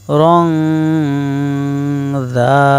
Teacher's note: র আলিফ 2 জবর রান, তানবিনের পরে জাল, ইকফায়ে হাকিকি গুন্নাহ করিয়া পড়িতে হয়, জাল আলিফ জবর দা, মধ্যে তবাই 1 আলিফ, দা।